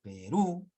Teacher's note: Porque es una aguda, la mayor fuerza de voz está en la última sílaba